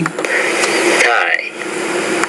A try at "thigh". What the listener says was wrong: Now, the first word is not tie, but thigh. Thigh. These are interdental consonants, which means you want to put the TH in between your teeth when you produce this sound. Thigh, thigh. And we're actually differentiating here between the voiceless and the voice interdental consonant.